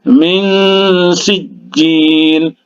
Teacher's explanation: Nun sukun atau nun mati bertemu dengan huruf sin. Huruf sin ini adalah huruf ikhfa.